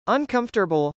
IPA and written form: ənkˈʌmfɚtəbəl (uncomfortable)